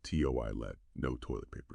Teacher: Remember toilet has stress on the first syllable.